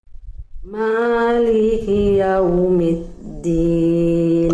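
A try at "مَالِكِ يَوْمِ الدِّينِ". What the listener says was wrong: Oke, huruf kaf kasrohnya jelaskan Bunda. Maliki, ada percikan nafasnya. Jangan maliki. Maliki yaumiddin.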